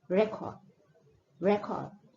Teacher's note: The first one, the stress is more on the first syllable